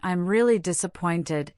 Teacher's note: when saying I'm really disappointed, emphasize really to convey genuine feeling